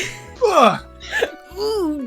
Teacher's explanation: You gotta end, there's a glottal stop on the G.